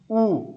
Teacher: उच्चारण करते समय हमारा मुंह ऊ ऐसे गोल हो जाता है। इसीलिए इसको बोलते हैं वृत्ताकार स्वर या गोलीय या गोलाकार स्वर।